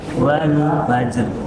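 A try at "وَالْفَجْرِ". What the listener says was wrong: Tebal wal fajr.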